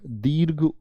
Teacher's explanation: जीभ के पिछले हिस्से से उच्चारित होते हैं। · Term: पश्च स्वर